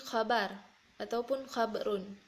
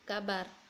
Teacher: Yang keempat konsonan KH menjadi K seperti khabar ataupun khabarun menjadi kabar.